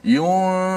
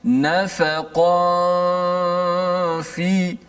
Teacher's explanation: Nun dah disembunyikan pada makhraj fa tu. Nun kekalkan pada gunnah saja di khayshum, di hidung. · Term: ikhfa hakiki